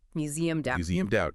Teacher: And phonetically, listen to how you just said it. You don't pronounce a hard E and a hard D. It's not museum-ed. The D sound links directly to the word out.